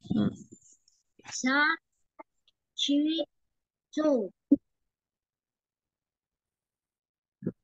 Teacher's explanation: Jangan ditambah huruf y di tengahnya. Jadi shu gitu aja, jangan ada y.